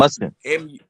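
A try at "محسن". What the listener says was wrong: Muhsin, like Mason, but Muhsin. The H is actually very hard. So in Arabic, it's Muhsin. I try to tell people, because people don't speak Arabic, Americans got heavy tongues, I don't put the H on, so it's Muhsin.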